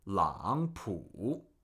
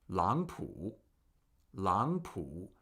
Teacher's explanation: This actually gets pronounced as 4, 2, 3, because in Chinese, when you have two consecutive third tones, the first in the pair is pronounced with a second tone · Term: third tone Sandy rule